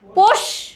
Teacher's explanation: তালুতে স্পর্শ করে যে স, তালব্য স।